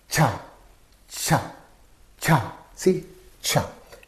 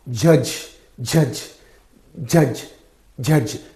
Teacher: in the pronunciation of the J and this cha the air flow is stopped and suddenly released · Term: affricates